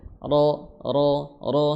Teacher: sifatnya sifat takrir getaran ya getarannya getaran ringan